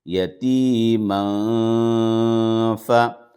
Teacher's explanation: نون کی آواز کو اب ناک میں چھپا کر پڑھیں گے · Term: اخفا